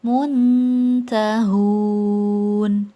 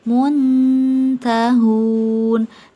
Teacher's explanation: lebih dekat ke Nun saat membaca seperti huruf N tidak sampai ke belakang menjadi dengung tidak sampai engke maka suara samarnya lebih tinggi daripada suara dengungnya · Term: ikhfa aqrob